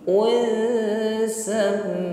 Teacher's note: Asma'un, dengungkan dhammah tanwin pada huruf sin. Unsam, kembali berdengung mim tasydid